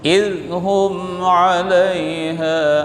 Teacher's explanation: hum mim mati jumpa dengan ain, izhar syafawi, tidak dibaca dengung.